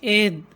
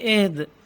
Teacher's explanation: وقف کی جگہ پر ہم دال کو قلقلہ کریں گے، اہد اس طرح سے بند آواز نہیں پڑھیں گے، اہد۔